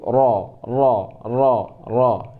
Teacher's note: Peringkat pertama, lidah kita angkat paling tinggi, yaitu ro.